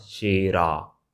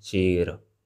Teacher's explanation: So but it's not ending with a sound. It's not shera, right? It's sher. It's ending with schwa sound.